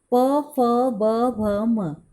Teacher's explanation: दोनों होठों से बोले जाने वाले व्यंजन हैं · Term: ओष्ठ्य